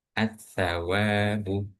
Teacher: diucapkan dengan meletakkan lidah berada di antara dua gigi. E maksudnya gigi atas dan gigi bawah.